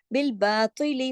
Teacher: अब चाहे तो के नीचे जेर है लेकिन उसको भी हमने हैवी करके ही पढ़ना है